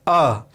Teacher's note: जैसे देखिए, अब अ उच्चारण करके देखिए, अ, तो हवा जो है अंदर से सीधे बाहर की ओर निकल गई, कोई भी बाधा नहीं हुई, कोई भी घर्षण नहीं हुआ।